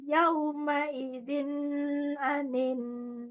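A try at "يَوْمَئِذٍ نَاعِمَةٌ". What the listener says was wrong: Idinnya jangan kelamaan. Yauma idzin anin.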